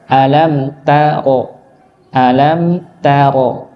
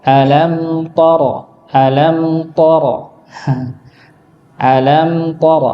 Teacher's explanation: huruf ta huruf yang tipis bukan huruf yang tebal